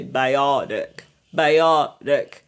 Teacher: Souvent, la règle du flap T aussi, c'est quand vous voyez le T entre deux voyelles, il prend le son du D. Ça devient un flap, donc ça fait biotic.